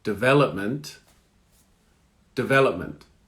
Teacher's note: So the T almost disappears at the end when you go quick.